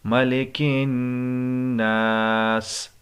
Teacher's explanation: ملک الناس، یہاں پر بھی نون مشدد پر غنہ ہوگا۔ آخر میں ہم نے سین کی آواز جو سیٹی کی طرح نکلتی ہے وہ ظاہر کرنا ہے